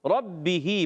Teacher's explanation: با مشدد ہے، ذرا رک کر ادا کریں گے. با ادا ہوتا ہے دونوں ہونٹوں کے تر حصے سے.